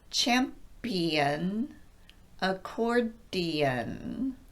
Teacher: See if you can hear where I'm stopping the airflow on the P and the D, both stop consonants, in these two words.